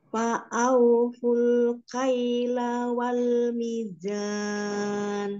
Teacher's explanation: lamnya pendek satu harakat